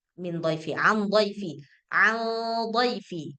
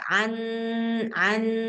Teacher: suara nun sakinahnya itu samar enggak boleh dibaca jelas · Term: ikhfa hakiki